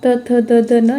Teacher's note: त वर्ग, त, थ, द, ध, न, इनका जो उच्चारण स्थान है वो दंत्य है। आप बोल के देख लीजिए, त, दांत का सहारा लेना पड़ता है उच्चारण के लिए।